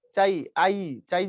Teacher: চা আ প্রপার উচ্চারণ করছি। চাই আই চাই যখন বলছি ই যখন বলছি পুরোপুরি উচ্চারণ করিনি। অর্থাৎ শেষেরটাকে আমি লম্বা করতে পারি না। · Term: অর্ধ স্বরধ্বনি